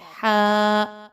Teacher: ہا جو ہے وہ حلق کے درمیانی حصے سے ادا کیا جاتا ہے